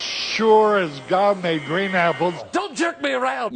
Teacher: is very de-nasal. He really doesn't send a lot of air through his nose, so it's almost like when you're stuffed up and you don't have any air that can come through there.